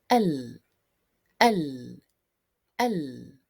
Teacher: contact between the two front lateral borders of the tongue and the comes of the adjoining upper teeth starting from the